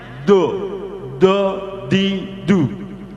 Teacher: Makhrajnya adalah pinggir kanan kiri atau kanan kiri lidah terkena gigi geraham. Gigi geraham itu setelah gigi taring ya. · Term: dot